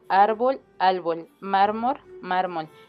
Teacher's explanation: la neutralización de R y L implosivas